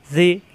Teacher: নরম করে, জিব্বার আগা দাঁতের আগায় লাগিয়ে